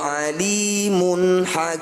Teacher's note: bunyi dumah tanwinnya baca dengan jelas tanpa dengung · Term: izhar halq